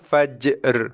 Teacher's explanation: Kita settlekan bunyi jim fajr dengan sifatnya qalqalah fajr. Lepas tu barulah kita bunyikan ra, makhraj dan juga sifatnya.